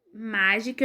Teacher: a sílaba mais forte é o má, não é o K.